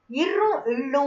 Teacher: நாக்கோட ஒரு நுனி மேல்வாயை வருடுவதால பிறக்குது